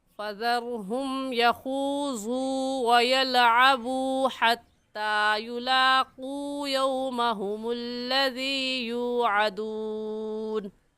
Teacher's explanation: واو مدہ کو ایک الف کی مقدار کھینچ کر پڑھتے ہیں